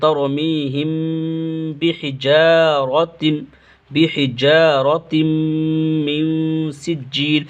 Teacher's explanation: کھچنا ہے، ترمیہم بحجا، یہاں پہ جو ہے اخفاء شفوی ہوگا، میم ساکن کے بعد با آ رہا ہے تو یہاں پہ میم کو با سے بدل کر گنہ اور اخفاء کے ساتھ پڑھیں گے